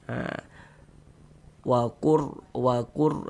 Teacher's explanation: Jadi kalau ada huruf ro sukun sebelumnya harakat dhammah atau huruf ra sukun sebelumnya harakat fathah, maka huruf ras sukun juga dibaca tebal, dibaca tabkhim.